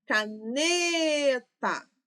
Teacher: O ne, eu falei por mais tempo, certo? Minha sílaba tônica.